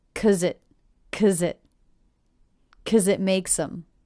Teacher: The Z sound links to the next word, it.